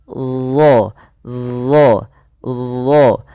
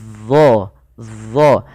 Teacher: ujung lidah ketika melafalkan huruf dha itu kita tempelkan dengan gigi seri atas kita. Dha, ujung lidahnya nempel.